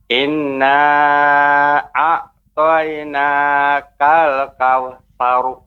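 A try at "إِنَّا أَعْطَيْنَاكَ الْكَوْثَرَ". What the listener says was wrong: Kemudian untuk inna, nun yang bertasydid itu harus lebih ditekan lagi, tidak terlalu cepat temponya. Nah, untuk pengucapan ro ya juga tidak boleh menjadi dhammah. Kautsaru, kautsaru, ya nggak boleh dari dhammah, dan tidak boleh juga dimonyongkan kautsar, kautsaru, kautsaru, tapi dilepaskan, dibuka kautsar, sar, sar.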